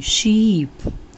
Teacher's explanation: जो शीप होता है जिसमें डबल ई है तो दीर्घिकार लगाते हैं और इसको देर से बोलते हैं। तो दीर्घिकार यानी पीछे से जो मात्रा आती है उसमें देर से बोलते हैं शीप।